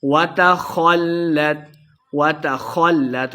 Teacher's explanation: خا کو موٹا پڑھیں گے، لام مشدد ہے، خا کو لام کے ساتھ ملا کے پڑھنا ہے، آخر پہ ہم نے وقف کا دینا ہے۔